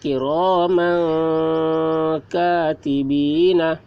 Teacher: تنوین کے بعد حروف اخفا میں سے کاف آ رہا ہے، اس لیے تنوین کی آواز کو ناک میں چھپا کر پڑھیں گے، اس کو اخفا کہتے ہیں۔